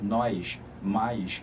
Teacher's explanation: S chiado gera uma semivogal epentética. Então, sempre que você fala nós, mais, você acaba criando um i imaginário nessa pronúncia, reparou?